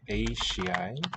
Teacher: Palatalization of the S to a sh.